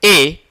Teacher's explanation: अरी की गणना होती नहीं इसमें। फिर जब ए जब हम बोलते हैं ए, तो ओठ गोलाकार नहीं होता है।